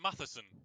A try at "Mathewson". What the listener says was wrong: Kevin Mathewson. It's Kevin Mathewson, but it's spelled actually have a W in it. That's why I'm saying Mathewson.